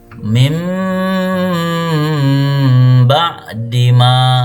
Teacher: Cara membacanya dengan menyuarakan huruf nun atau tanwin menjadi huruf mim. Jadi ba itu berubah jadi mim dengan merapatkan dua bibir serta mendengung. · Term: iqlab